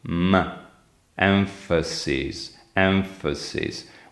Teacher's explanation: When you say emphasis, you put the upper teeth on the lower lip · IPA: [ɱ]